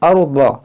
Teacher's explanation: रा साकिन से पहले ज़बर है, इसको मोटा पढ़ेंगे।